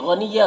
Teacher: गैन को पुर पढ़ेंगे, और यन के तनवीन में इजहार हो रहा है, इसे जल्द पढ़ना है